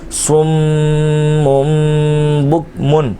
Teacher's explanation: صاد میم پیش سم میم مشدد ہے اس کا غنہ کرنا ہے میم دو پیش من سم من تنوین کے بعد پھر با کاف پیش بک میم دو پیش من بک من با آ گیا میم کی آواز تنوین کی جو آواز ہے وہ میم سے بدل جائے گی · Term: اقلاب کا قاعدہ